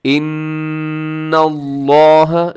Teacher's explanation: لفظ اللہ کو موٹا کر کے پڑھنا ہے آپ نے۔ اس کی وجہ یہ ہے کہ لفظ اللہ سے پہلے، لفظ اللہ کے لام سے پہلے حرف کے اوپر زبر ہے، یعنی نون کے اوپر زبر ہے، تو ہم نے اس کو موٹا پڑھنا ہے۔